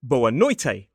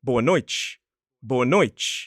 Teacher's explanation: Brazilians will pronounce a T as more like a ch noise